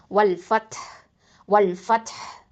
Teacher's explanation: ஹம்ஸ் சிஃபத்தை கொடுக்கணும். ஓகேவா? காற்று வந்து வெளியில் வரணும். அப்போது வல் ஃபத் வல் ஃபத் அந்த ஹ அந்த சவுண்டும் கொடுக்கணும் நம்ம.